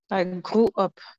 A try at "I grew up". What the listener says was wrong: Good.